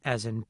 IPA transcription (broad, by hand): ʌ